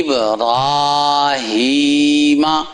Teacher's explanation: یہ را کو بعض لمبا کیے بغیر پڑھتے ہیں تو آپ یاد رکھیے گا، را یہ کھڑی زبر ہے تو کھڑی زبر کے ساتھ اسے پڑھنا جائے لمبا کر کے